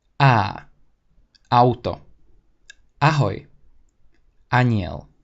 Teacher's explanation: In Slovak, the accent is simply put on the first syllable.